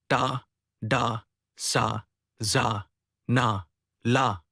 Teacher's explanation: produced with the tongue tip touching or approaching the alveolar ridge, the tooth ridge behind the upper teeth